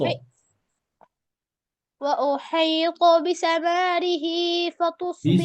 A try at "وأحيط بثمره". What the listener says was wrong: بثمره، মাতে মাদ নেই। وأحيط بثمره